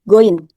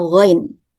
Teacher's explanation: Pada huruf ghain suka terbaca goin pakai G, goin. Harusnya ghain.